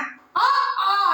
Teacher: அ ஆ ஆகிய இரண்டும் வாய் திறத்தல் ஆகிய முயற்சியால் பிறக்கின்றன. அ ஆ நம்ம வாயை திறக்கிறோம் இல்லையா, அதனால பிறக்கின்றது, அந்த முயற்சியால பிறக்கின்றது.